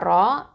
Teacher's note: ரா ஃபதா அலிஃப் சகீரா ரா, இது ஹெவியாக ஓதணும், தஃப்ஹீமாக ஓதணும்.